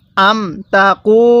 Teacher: কফের মধ্যে আমরা এক আলিফ টান দিব পেশের পরে ওয়াও সাকিন থাকার কারণে, এবং লামের মধ্যেও আমরা এক আলিফ টান দিব পেশের পরে ওয়াও সাকিন থাকার কারণে।